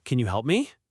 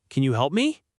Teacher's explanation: But you can say it with a rising soft intonation and it sounds like a plea.